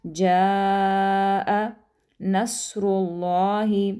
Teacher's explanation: الف مدہ کے فوراً بعد حمزہ ہے تو مد فرعی کی وجہ سے ہم یہاں پر بڑی مد لگ جائے گی، تو آپ نے اس کو 3 سے 4 حرکات کے برابر لمبا کرنا ہے۔